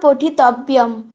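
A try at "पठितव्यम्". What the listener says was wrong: পঠিতব্য বলেই যেন থেমে যাচ্ছেন এরকম মনে হচ্ছে সেই জন্য ম এর উচ্চারণটাও স্পষ্ট করতে হবে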